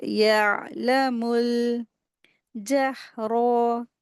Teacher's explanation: रा को हैवी करेंगे लेकिन जल्दी पढ़ेंगे, इसको खींचेंगे नहीं।